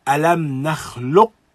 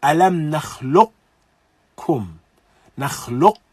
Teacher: Yani, alam nakhluqkum, And so it is as though we're catching the sifat of qaf, but then we recite kaf. And so we can even hear the sifat, almost as though we're about to recite the letter. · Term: idghamun naqis